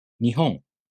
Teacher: The first mora starts low in pitch. So, the next mora must be high in pitch. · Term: pitch accent